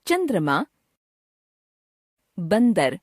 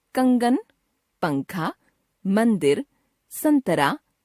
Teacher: अनुस्वार के बिंदु का उच्चारण किसी ना किसी नासिक्य व्यंजन के रूप में होता है